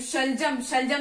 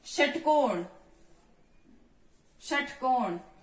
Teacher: और ये श, इसमें क्या हो जाएगा, तालव्य हो जाएगा। शलजम क्या होता है, तालव्य होता है। और षटकोण क्या होता है, मूर्धन्य होता है।